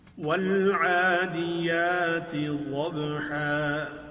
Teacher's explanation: ہا کو پر بھی نہیں کریں گے، موٹا کر کے بھی نہیں پڑھیں گے، اور اس کے بعد والے الف کو بھی پر نہیں کریں گے کہ کہیں مجھول نہ ہو جائے.